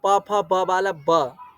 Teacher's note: जब हम दोनों ओष्ठ को जोड़ देंगे तो वो हो जाएगा ब, प फ ब वाला ब।